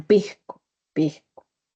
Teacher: Se percibe como una J suave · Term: Aspiración de la S